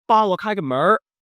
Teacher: the use of erhua, the addition of an R sound at the end of a word. Basically, what that means is that Beijingers curl their tongue a lot.